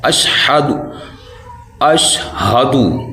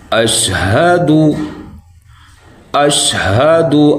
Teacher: دال پہ آپ کے جو ہونٹ ہیں وہ گول ہونے چاہیے